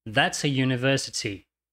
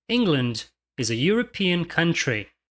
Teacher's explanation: tanto University quanto European na verdade começam com um som de consoante é o som y